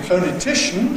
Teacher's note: in ‘phonetician’ /ˌfəʊnɪˈtɪʃn/, stress is on the /-tɪʃ-/